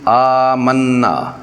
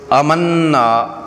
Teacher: جب یہ لفظ آمنا کو جلدی میں امنا آواز کو بغیر کھینچے پڑھ دیتے ہیں تو یہ ایک بڑی غلطی بن جاتی ہے، کیونکہ یہاں حمزہ الف سے پہلے آیا ہے جسے مد بدل کہتے ہیں، اس لیے اسے 2 حرکات کے برابر لمبا کر کے پڑھنا ضروری ہے